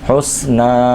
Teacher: نون کو ایک الف کے برابر کھینچیں گے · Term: کھڑا زبر